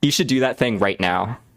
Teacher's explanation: the last syllable of statements I was making I had a downward inflection when you do that you naturally sound more confident a lot